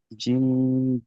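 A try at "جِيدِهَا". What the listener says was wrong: জিম বলছেন, এটা আপনি জিম বলছেন, এটা জিম হবে না। জি জি, জিম ইয়াজের জি।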